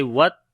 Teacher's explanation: تا کے اندر صفت شدت اور ہمس دونوں آئیں گی